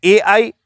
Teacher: फिर है ए आई, इसकी जो उच्चारण जो हो रहा है वो उच्चारण कंठ प्लस तालु से हो रहा है, कंठ प्लस तालु यहां से हो रहा है, इसलिए इसको नाम देंगे कंठ्य तालव्य।